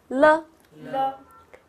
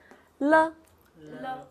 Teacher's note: You will feel your tongue is like a L and sound from both sides of your tongue, right? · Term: l sound